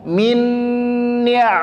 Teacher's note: cara membacanya mesti di tahan suaranya atau didengungkan Berapa panjang dengungnya dua harakat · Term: idgham bighunah